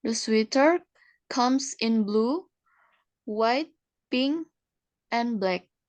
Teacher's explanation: The intonation rises and the falls. We use rise fall intonation for choice, list, unfinished talk, and conditional sentence.